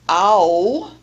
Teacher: begins in the low central area with the vowel sound ah, and it combines with the semi-consonant w to glide all the way up and back toward the sound oo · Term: diphthong ow